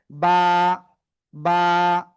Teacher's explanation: দুই ঠোঁটের ভিজা অংশ থেকে